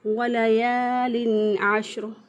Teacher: الف سے پہلے والے حرف پر زبر ہو تو الف مدہ ہوتا ہے، مد کا مطلب ہوتا ہے کھینچ کر پڑھنا، تو اس لیے الف مدہ کو ایک الف کے برابر کھینچ کر پڑھتے ہیں